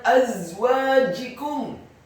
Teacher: za-nya dibaca tafkhim dengan desis yang tebal tanpa mengeluarkan lidah kita sedikit pun